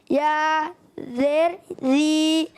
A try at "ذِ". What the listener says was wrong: ذال، ذال کو پورا پڑھنا ہے. ذال یا زیر، زیر ہوتا ہے، زیر نہیں ہوتا. ذال یا زیر ذی. اچھا یہ زیر ہوتا ہے، زیر زبر اور زیر زا سے ہوتا ہے. زبر زیر جو ہوتا ہے نا یہ زا سے ہوتا ہے، زا سیٹی والا، زبر زیر، زبر زیر. بعض بچے پڑھتے ہیں زبر زیر، زبر زیر نہیں.